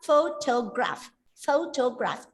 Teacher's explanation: in the word photograph the first syllable is stressed